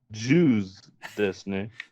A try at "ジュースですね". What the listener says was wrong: Juice, not like the ethnic or the religion. Juice desu ne.